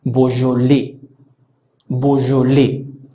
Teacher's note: Si pronunciamos, tomando en cuenta estas características, EAU suena O, la J suena J, AI suena E, la S final no suena, la sílaba tónica es la que pronunciamos al final. Por lo tanto, esta palabra debería sonar y suena Beaujolais.